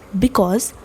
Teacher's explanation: you are not stressing the first syllable be. But when it comes to cause, you're stressing the second syllable · So the first one will be unstressed and the second one is stressed. It sounds like da d d d d d d d d d d d d d d d d d d d d dum.